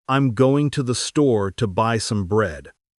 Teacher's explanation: The most stressed words are going, store, and bread. >> The unstressed words like I'm, to, and the are said quickly and more softly.